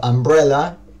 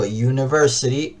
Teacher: si yo digo umbrella, estoy pronunciando la u como a y si digo university, la estoy pronunciando como you